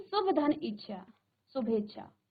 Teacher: तो अ धन इ आपका क्या हो जाएगा? ए। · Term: स्वर संधि